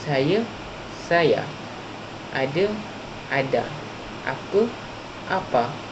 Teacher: dialek Kedah, vokal rendah A yang terdapat di akhir kata tidak berubah menjadi vokal tengah I seperti apa yang berlaku pada Melayu Standard.